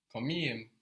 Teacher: The K gets softened to a G, but it gets really softened to a soft G.